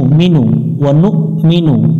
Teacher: এখানে হামজার উপরে সুকুন আছে একটু শক্ত করে পড়তে হবে